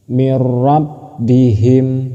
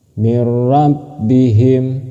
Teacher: Apabila ada nun mati ataupun tanwin bertemu dengan ro ataupun bertemu dengan lam, itu masih disebut idgham bila gunnah. Cara membacanya masuk tanpa berdengung